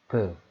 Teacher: 그러다가 소리를 내면 브. 예, 완전히 막았다가 터치면서 나는 소리죠. 그래서 이거를 파열된다 해서 파열음이라고 해요.